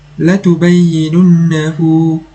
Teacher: Pada huruf ha damir terdapat waw kecil, maka ianya merupakan mad silah sughra dan haruslah dibaca dengan kadar 2 harakat.